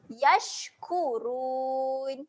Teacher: Ketika shin mati dia ada keluar angin.